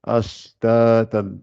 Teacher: On n'appuie pas sur le ta.